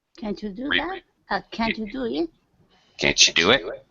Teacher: T plus Y, ending sound with T, and a Y sounds like CH.